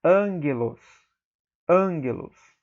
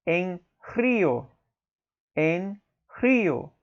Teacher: você ter dois gamas na mesma palavra, um junto do outro, o primeiro gama sempre terá som de N, como em ângelos.